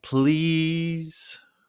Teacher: holding please at the same pitch to sound playful or begging. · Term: held pitch